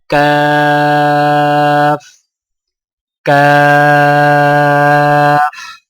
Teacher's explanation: زبان کی جڑ کو کوے کے قریب تالو پر لگا کر باریک آواز میں پڑھیں، یعنی کاف کاف۔